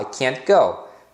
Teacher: então por exemplo quando você fala e os auxiliares negativos e normalmente o t final ele é pronunciado como um Stop te Ou seja você coloca a língua e próximo do dos dentes